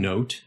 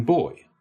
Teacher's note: the starting tongue position for o as in note and oi as in boy, a tongue position that was further down from our u vowel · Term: diphthongs